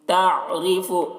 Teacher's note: عین ہے تو اس وجہ سے اس کی آواز حلق میں پہنچے گی